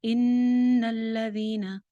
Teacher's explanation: ان نون شد آ رہی ہے، غنہ ہو جائے گا ایک الف کے برابر. لام کے اوپر بھی شد ہے.